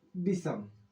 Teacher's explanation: दंत स का मूर्धा स हो जाता है